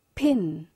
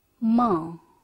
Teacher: You see here like pin. So air is stopped at the place of lips.